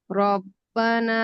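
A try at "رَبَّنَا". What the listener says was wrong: এটা রপ্পানা হয়ে গেছে, রপ্পানা হয়ে গেছে, বা বা বা। চাপ দিয়ে না, চাপ দিয়ে না বেশি।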